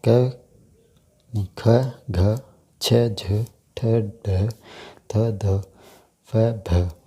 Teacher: अब बात करते हैं महाप्राण व्यंजनों के बारे में। इनके उच्चारण में वायु की मात्रा अधिक खर्च होती है